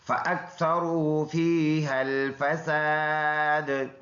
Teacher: یہ الف مدہ ہے، دال میں قلقلہ کریں گے بوجہ وقف